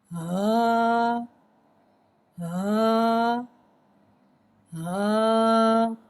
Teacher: हा हुर्फ़े हलकिया है, हलक के नीचे वाले हिस्से से अदा होता है। इसकी आवाज़ भारी अदा करके पढ़ते हैं।